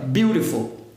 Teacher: quando a gente tem T ou D entre vogais, é o que nós chamamos até de flap T, esse T ou D vai passar a ter um som de R.